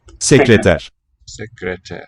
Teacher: Voiceless R at the end.